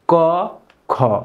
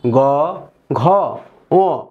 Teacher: এই অঘোষ ধ্বনি উচ্চারণের সময় স্বরতন্ত্র অনুনালিত হয় না, অর্থাৎ খুব একটা কম্পন সৃষ্টি হবে না। আর ঘোষ ধ্বনিতে স্বরতন্ত্র অনুনালিত হবে বা কম্পন সৃষ্টি হবে।